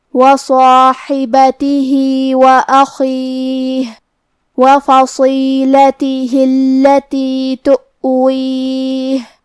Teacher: خا کی ادائیگی حلق کے اوپر والے حصے سے ہے. کیونکہ خا حروف التفخیم میں سے ہے تو ہمیں یہ حرف کو موٹی آواز میں پڑھنا ہے.